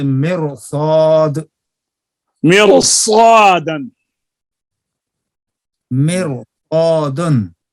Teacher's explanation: مرصادن میں حالانکہ را سے پہلے زیر ہے لیکن اسی لفظ میں حروف مستعلیہ صاد آ گیا ہے اب را کو باریک نہیں کریں گے بلکہ صاد حروف مستعلیہ کی وجہ سے پر پڑیں گے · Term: را کے پر